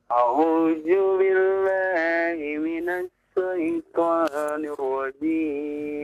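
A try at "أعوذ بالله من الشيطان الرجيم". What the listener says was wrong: Nah, perhatikan ya, huruf zal ya. Huruf zal dari ujung lidah bertemu dengan gigi seri atas ya. Ulang lagi, a'udzu. Nah, bukan ju ya. Kalau ju itu berarti dari tengah lidah, ya. Berarti huruf jim. Az, ya. Ujung lidahnya ditahan, tempelkan ke gigi seri yang atas. Az, za, zi, zu, a'udzu. Bukan ju, bukan.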